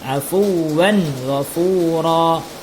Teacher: Ya, kita perhatikan tanwin. Tanwin bertemu dengan huruf ghain. Maka tanwinnya dibaca jelas, tiada berdengung. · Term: izhar